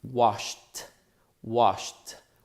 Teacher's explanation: the last sound on the verb wash SH is also a voiceless sound